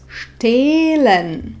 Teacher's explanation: H nevyslovíme, pretože stojí za samohláskou E, to E však vyslovíme dlho. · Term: dlhé E